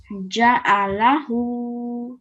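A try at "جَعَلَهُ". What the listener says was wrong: Mashallah, very nice, very, very nice.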